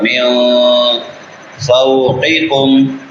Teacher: جاءوکم من فوقکم، میم کے بعد نون ساکن ہے. نون ساکن کے بعد حروف اخفا میں سے فا ہے، یہاں پہ اخفا ہوگا